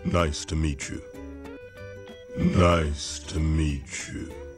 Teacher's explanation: He said, nice to meet you, but with a connected speech. When the word ends with the letter T and the next word starts with the letter Y, often they give the ch sound. Like here, meet you becomes meet you.